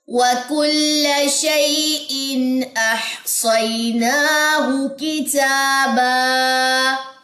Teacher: اس کے بعد یہاں پہ یا لین ہے, نون کے اوپر کھڑا زبر ہے, ہا کی پیش لمبی نہیں کرنی, کاف لمبا نہیں کرنا, تا کے اوپر کھڑا زبر یہ بھی لمبا ہوگا اور الف مد بھی لمبا ہوگا